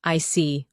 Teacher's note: When you show understanding with I see, your tone drops slightly to show calmness. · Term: intonation, falling tone